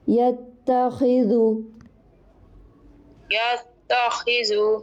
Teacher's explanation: خا کو موٹا کریں گے، حروف مستعلیہ میں سے ہے